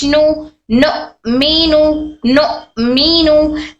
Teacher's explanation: नून हमारी जबान के सामने का हिस्सा ऊपर के दांतों को टच होता है